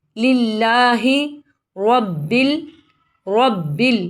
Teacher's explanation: را کے اوپر زبر ہے، اس کو موٹا پڑھیں گے